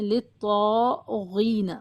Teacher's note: غین کو بھی موٹا پڑھا جائے گا اور طا کو اس سے بھی زیادہ، سب سے زیادہ موٹا پڑھا جائے گا